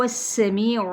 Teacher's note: سین پہ سیٹی، می پہ یا مدہ، عین باریک، لی پہ یا مدہ، میم پہ وقف کیا تو وقف بالاسکان۔